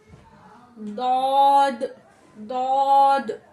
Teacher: जबान की करवट को पीछे की तरफ दबाते हुए मोटी आवाज में हम पढ़ेंगे